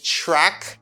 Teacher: when T combines with r it got a CH sound